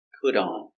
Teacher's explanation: The T is pronounced with a D.